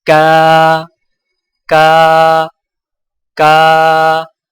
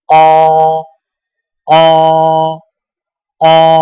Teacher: کاف کی آواز باریک ہوتی ہے، جیسے کا، کا، کا۔ قاف کی آواز موٹی ہوتی ہے، جیسے قا، قا، قا۔